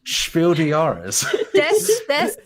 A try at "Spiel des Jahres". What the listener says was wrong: Des. Des. You say the S. Des. If it was French, you would say de.